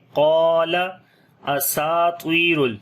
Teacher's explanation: قاف کو اور الف کو موٹا پڑھیں گے اور لمبا بھی کریں گے